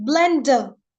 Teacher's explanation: there's E, a vowel before R, and we are going to silent that R